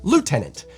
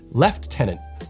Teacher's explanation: Brits have added an F sound in there